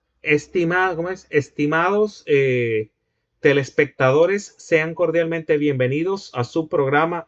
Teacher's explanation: se oía un habla como muy robótica, tratando de mantener las S al final de palabra